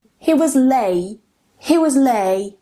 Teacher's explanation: You can hear that there is a little cut where there is the glottal stop. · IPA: ʔ